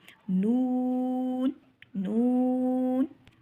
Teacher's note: नून की आवाज़ में, नून की आवाज़ नाक में ना जाने का तरीका, जब हमारे होंठ, ठीक है, नू कहते हैं तब तक होंठों को गोल करेंगे, उसके बाद फिर जब आखिर में नून बोलेंगे तो फिर आवाज़ बेशक नाक में जाए। नू पे होंठों को गोल करेंगे और आवाज़ नाक में नहीं जानी चाहिए।